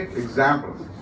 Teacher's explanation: the exam actually comes strong